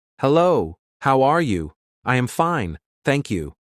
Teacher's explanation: monotone speech this means speaking without variation in pitch or emotion imagine if I said this entire sentence in a completely flat